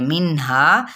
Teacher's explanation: اظہار ہو رہا ہے نون پہ اور ہا 1 الف کے برابر